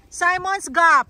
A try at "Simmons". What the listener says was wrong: Simmons. It would be Simons if there was only one M. Since there's two M's, it shortens the I.